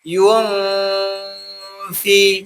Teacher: Pas kita dengung, itu udah langsung ke huruf fa. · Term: ikhfa